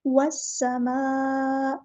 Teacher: سین میں سٹی لے کر آنی ہے ، اور یہاں پہ ہمیں مد دکھ رہی ہے، مد متصل